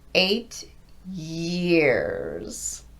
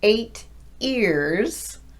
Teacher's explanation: starting from a completely stopped voice, you're going to first do that y sound that you would do at the beginning of yes, and then glide into the E